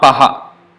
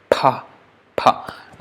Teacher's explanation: same pa with force of breath, aspirated.